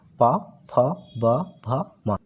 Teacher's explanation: बिल्कुल आपका ये प फ ब भ म ओट से बोला जाता है · प, फ, ब, भ, म ओष्ठ से बोला जाता है, इसलिए इसको ओष्ठीय कहते हैं। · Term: ओष्ठीय व्यंजन